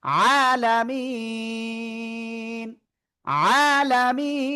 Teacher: ওকে, এবং তার আগে আমরা এক আলিফ মাদ দেখতেছি, এই জন্য আমরা তিন আলিফ টেনে পড়বো।